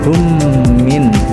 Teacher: mim ketemu dengan mim dibacanya ditahan tiga harakat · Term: idgam mimi